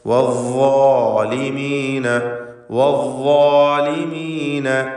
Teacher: നാവിൻ്റെ അറ്റത്തിൻ്റെ മുകൾ ഭാഗം മേലെ മുൻപല്ലിൻ്റെ അറ്റവുമാണ് മഖ്റജ്, എന്നാൽ തഫ്ഖീം ചെയ്യേണ്ട ഹർഫാണ്, തടിപ്പിച്ച് ഉച്ചരിക്കണം. ഇസ്തിഅല, ഇത്ബാഖ് തുടങ്ങിയ സിഫത്തുകളൊക്കെ അതിനുണ്ട്.